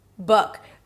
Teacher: The sound there, the vowel there is somewhere between u and a and o. Book. Drop your jaw, relax your lips, create a lot of space in the back of your mouth, be really chill and say it with me.